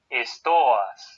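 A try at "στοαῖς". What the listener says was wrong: Stoas. Mira que el acento está sobre la alfa. Stoas. Y tú me lo estás haciendo sobre la Omicron. Stoas, no, stoas.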